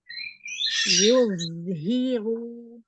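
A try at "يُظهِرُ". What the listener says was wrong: Runya takrir dan dhammahnya coba sempurnakan lagi, jangan menghilang.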